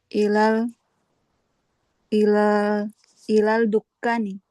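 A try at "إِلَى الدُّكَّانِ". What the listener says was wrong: Lamnya nggak terbaca kan alif lam sama ya.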